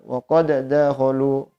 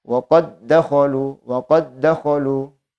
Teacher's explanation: Idgham dimasukkan secara sempurna bidunil gunnah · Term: idgham kamil